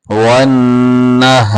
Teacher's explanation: نون کے اوپر غنہ پورا کرنا ہے